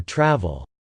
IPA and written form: trævl (travel)